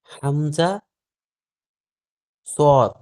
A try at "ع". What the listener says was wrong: হামজা কি যুক্ত হয়?